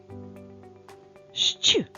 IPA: шч